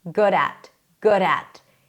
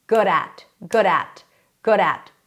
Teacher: It sounds like the T in little because it's pronounced exactly the same. The T and D between two vowels are pronounced the same and they're pronounced as a flap.